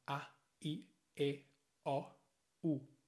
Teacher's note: auf Spanisch haben wir nur 5 Vokale und die sind alle mittellang